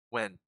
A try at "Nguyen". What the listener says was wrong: Nguyen with an N in the beginning.